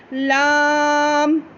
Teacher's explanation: ठीक है, तो हमने ज़ुबान की करवट यानी ज़ुबान का निचला हिस्सा ऊपर उठा के ऊपरी जबड़े के दांत और एक दाढ़ से टच किया और हमने अदा किया लाम।